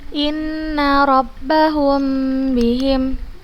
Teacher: apabila mim sukun bertemu dengan huruf ba cara membacanya adalah dengan menggunakan huruf mim itu dengan tempo yang dipanjangkan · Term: Ikhfa Syafawi